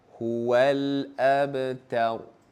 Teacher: pastikan ra itu dibaca dengan tebal